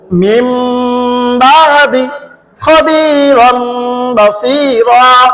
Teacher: নুন সাকিনের বামে বা, ইকলাবের হরফ, নুনকে গুন্নার সহিত মিম পড়িতে হয়।